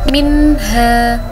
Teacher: ada nun sukun bertemu dengan huruf ha. Jadi bacaannya jelas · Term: izhar khalqi